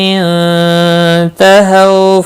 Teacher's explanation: نون ساکن کے بعد حروف اخفا کا تا اخفا حقیقی ہوگا۔ ہو واولین ہے، تھوڑا نرمی کے ساتھ کھینچ کر ادا کریں گے۔